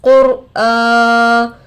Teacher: हमजा पर खड़ा जबर बराबर है अलिफ मद्दा के, थोड़ा खींच कर पढ़ेंगे।